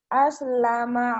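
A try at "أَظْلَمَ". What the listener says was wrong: azlama, ZHO, azlama, bukan aslama ya.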